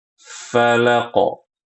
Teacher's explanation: langsung qalqalah falaqo karena huruf qof-nya tidak bertasydid